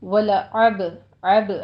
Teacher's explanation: ہے، فتحہ ہے، صرف ایک حرکت ادا کرنی ہے، ولعب عب عین وسط حلق سے ادا کیجیے اور با پہ قلقلہ کرنا ہے